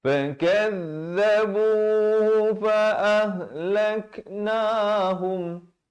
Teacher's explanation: Lak ada bunyi hamas ya, bunyi angin sikit ya.